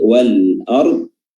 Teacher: Contohnya di sini yang telah kita bahas tadi huruf hamzah, ya, wal ard, ayat ke-9 tadi, wal ard, lam bertemu dengan hamzah yang keluar jauh dari ujung lidah, yaitu di pangkal atau di tenggorokan bagian bawah.